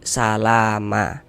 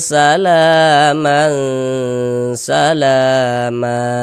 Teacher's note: cara membacanya bunyi tanwinnya dirubah bunyi fathatainya dirubah menjadi fathah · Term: mad iwad